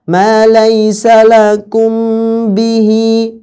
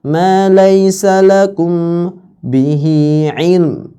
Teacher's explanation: Ikhfa'nya mim sukun pada saat bertemu dengan ba dengan cara apa? Intibaqi syafataini. Menutup dua bibir dua bibir kita.